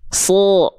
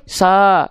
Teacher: Sebenarnya vokal A itu yang keluar, tapi karena nangkring pangkal lidah di atas, keluarnya jadi vokal seperti O. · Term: huruf tebal